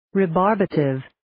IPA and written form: riː'bɑːrbətɪv (Rebarbative)